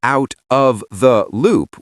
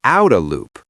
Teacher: That out of becomes outa. It's a classic American reduction that's even made its way into British speech. · She didn't say out of the loop with crisp stops. She said outa loop. That out of becomes outa. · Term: connected speech